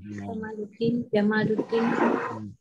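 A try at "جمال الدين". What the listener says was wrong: Tapi sebenarnya mimnya panjang, bukan pendek ya. Sebab kalau Jamaluddin itu unta. Unta kalau Jamaluddin. Tapi kalau yang Jamal itu maksudnya keindahan. Al-Jamal, mimnya panjang macam Kamal. Ada alif.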